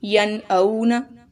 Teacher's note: واو ساکن ہے یہاں پر اور واو سے پہلے زبر آ رہی ہے، تو یہ واو لین ہے جس کو ہم آدھا الف کے برابر لمبا کرتے ہیں